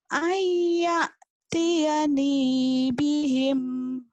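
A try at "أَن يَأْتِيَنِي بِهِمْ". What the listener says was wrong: Jangan ke hidung. Ayya biasa aja. Ayya Jangan ke hidung. Ayyatiyani.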